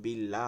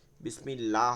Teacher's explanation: ডানে জের থাকলে ওই লামকে বারিক বা চিকন করে পড়তে হয়